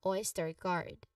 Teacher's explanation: The second syllable is stir, which has a schwa sound. A relaxed sound, followed by a clear R.